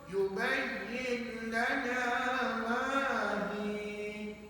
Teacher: Bila sebut yubayyin lana, itu tak boleh bunyi sengau. Jangan ada bunyi sengau langsung pada bacaan. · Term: idgham bila guna